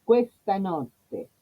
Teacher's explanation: notte, corta, abierta y doble T